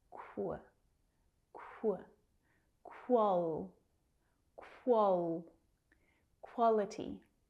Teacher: Quality. That QU can be a little tricky to pronounce. It's the consonants k, w together.